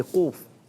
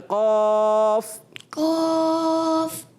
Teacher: होंठ गोल नहीं करने, और कौफ का अलिफ भी मोटा करना है।